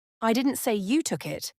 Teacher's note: the stress on you tells you that the focus is on who took it not the fact that it happened